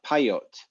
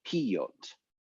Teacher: the E sound in pre-tonic unstressed syllables tends to become an ah sound